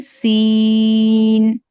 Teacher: জিহ্বার আগা সামনের নিচে দুই দাতের আগার সঙ্গে লাগবে